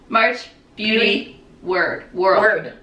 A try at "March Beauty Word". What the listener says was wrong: Word. words. Everyone thinks it's world, but it's just word.